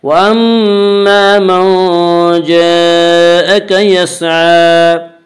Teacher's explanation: واما میم مشدد غنہ ہوگا، غنہ کی مقدار ایک الف ہے۔ واما الف مدہ، الف ہمیشہ مدہ ہوتا ہے، الف ہمیشہ مدہ ہوتا ہے، الف سے پہلے زبر ہوتا ہے، الف مدہ کو ایک الف کے برابر کھینچ کر پڑھیں گے۔